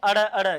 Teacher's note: जब इनको बोलते हैं तो हमारी जीभ को नीचे गिरा देते हैं, झटके से अलग कर देते हैं, इसलिए इनको क्या कहते हैं, ताड़नजात व्यंजन कहते हैं, ताड़नजात वर्ण कहते हैं।